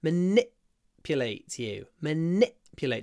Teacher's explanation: the I is clipped it's stressed but clipped